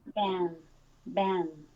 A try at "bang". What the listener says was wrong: Your tongue seems a little bit tense, but I think that it's just because you're making the sound really strong. Just think about that N as being smaller than the vowel.